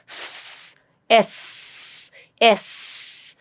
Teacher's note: narrow mouth air coming out through that narrow opening in the mouth with little bit of hissing sound or um you know and it's also slightly prolonged. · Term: fricative